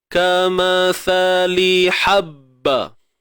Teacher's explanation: Sa jangan lupa keluar ujung lidah. Sikit je.